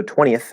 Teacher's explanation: so 20th it's a voiceless th